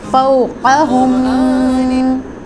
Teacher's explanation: فوقہم، قاف مستعلیہ لیٹر ہے، اس کو پر اور موٹا پڑھیں گے، جبکہ میم ساکن کے اوپر غنہ کریں گے